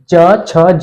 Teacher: प्रकार च वर्ग का तालू से होती है च छ ज जब आप च छ ज बोलते हैं तो जो आपकी जीभ है वो आपके ऊपरी तलवों को टच करती है स्पर्श करती है इसलिए इन्हें क्या कहा जाता है स्पर्शी व्यंजन